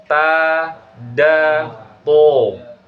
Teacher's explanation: Ujung lidah ketemu dengan pangkal gigi seri bagian atas. Itu huruf dal ya.